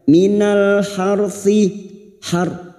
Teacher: ra sukun yang didahului fathah kita baca tafkim